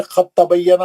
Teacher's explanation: اس مثال میں دال ساکن کی آواز تا ساکن سے بدل گئی اور پھر تا ساکن تا مشدد متحرک میں داخل ہو گئی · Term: ادغام میں متجانسین